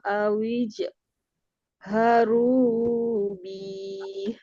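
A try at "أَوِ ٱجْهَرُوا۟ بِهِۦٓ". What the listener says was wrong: Wakofnya jangan dipanjangkan, enggak ada amatnya di sana. Wa awijharubi.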